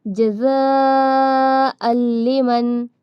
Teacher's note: یہاں پر ہم نے بغیر غنہ کے پڑھا کیونکہ یہاں پر تنوین کے بعد لام ہے